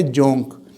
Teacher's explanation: واو کو واو مجہول پڑھیں گے اور نون کو غنہ کی طرح پڑھیں گے، تو وہ ہے جونک، لیچ۔